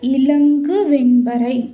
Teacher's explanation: 'ங்' ஒலி அதன் இயல்பான கால அளவை விட நீண்ட நேரம் உச்சரிக்கப்படுவதால், அதனை ஒற்றலப்படை என்று அழைக்கிறோம்.